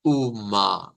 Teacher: Eh, Vamos a ir a la lengua portuguesa y aquí está UMA, con esa A media. Es una vocal de A media. Por eso la A se escucha más fuerte que la A del español.